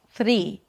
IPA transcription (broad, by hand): θɹiː